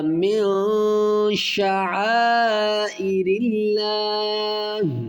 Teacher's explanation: یہاں جو غنہ ہے یہ اخفا غنہ ہے، کیونکہ نون ساکن کے بعد حروف اخفا میں شین ہے ، تو یہاں پر اخفا غنہ ہوگا، من شعائر اللہ، ان